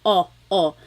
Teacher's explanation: I think of it like having a ball in your mouth your tongue gets kind of pushed back and down a little bit and the inside of your mouth is open and wide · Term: letter O